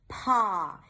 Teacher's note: The p is aspirated. So it sounds like there is a little h right after.